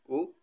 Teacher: ओट वर्ण यानी ओट से जो बोला जाता है उसमें उ है उ